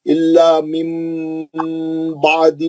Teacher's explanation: لذین اوتوا الکتاب الا من بعد، من بعد میں نون ساکن کا اخلاب ہے، ہم نون کو نکال کے میم کا غنہ کریں گے